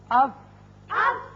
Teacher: اوپر والے دونوں دانت جب نچلے ہونٹ کے اندرلے حصے سے لگتے ہیں تو فا ادا ہوتا ہے